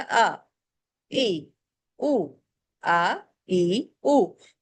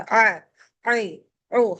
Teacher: अब आप आ पढ़ती हैं तो आ पढ़ते हुए ना कोई हवा है ना कोई मेहनत है ना हलक कहीं से दब रहा है मुंह भी खुला है हलक भी पूरा खुला है तो बड़े आराम से अदा हो गया आ इ उ आ इ उ जबकि ऐन पढ़ते हुए हमारे हलक दब रहा था अ ऐ उ एनर्जी लगानी पड़ रही थी हमें तवज्जा देनी पड़ रही थी लेकिन हमजा पढ़ते हुए ऐसा कुछ भी नहीं है।